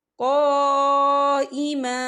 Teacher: اس پہ مد بھی ہے، تو ہم اسے 4 حرکت کے برابر کھینچ کے پڑھیں گے